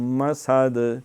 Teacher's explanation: تو سین ذرا باریک اس کی سیٹی کے ساتھ پھر آگے دال ہوگا